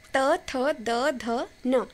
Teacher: इसमें हमारी जीभ जो है वो दांतों को टच करती है, तब जाके उस वर्ण का उच्चारण पॉसिबल हो पाता है। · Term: दंत्य वर्ण